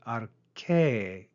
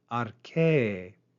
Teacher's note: note the circumflex accent at the end of that word, arche, rise and fall on that syllable.